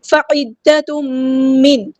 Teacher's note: فعدۃ من، عین کو مستحلق یعنی تھوڑا سا ادا کرنا ہے، تنوین کے بعد دیکھیں یہاں پہ میم آیا ہے، ادغام ہو رہا ہے، ادغام مع الغنہ، ادغام کرتے ہوئے 2 کاؤنٹس رکنا ہے